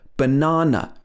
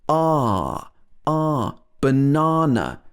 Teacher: the second a is ah ah banana because we stress the na in this word